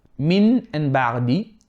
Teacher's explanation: What we are changing is the sound of the ghunnah into the sound of a Meem. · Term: Iqlab